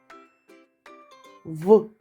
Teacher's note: пригадаємо чи працювало наше горло коли ми його промовляли в так горло працювало тому звук в дзвінкий